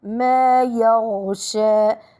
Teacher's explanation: ننتبه لرخاوة الغين أحبتي. وكما قلت من قبل الرخاوة جريان الصوت عند مرور في المخرج.